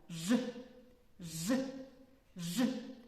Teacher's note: при його вимові повітря затримується глибоко у роті біля задньої частини язика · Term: звук ж